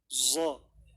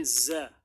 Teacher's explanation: istifal lidah berada di dasar mulut sehingga suaranya tipis